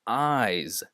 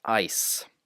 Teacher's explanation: There are two distinctions there. It's that eyes is pronounced with a Z, but it also has a slightly longer vowel than ice, which is pronounced faster. · And this Z sound, which is my personal favorite, very many words, in a lot of words in English, spelled with an S, but the S is actually pronounced as a Z. So this is eyes, not ice.